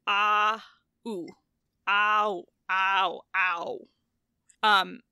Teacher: your mouth moving from the ah sound, which is like kind of toward the bottom and front of the vowel shopping cart, to the ooh sound that is much closer to the top and back of the vowel cart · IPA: [au]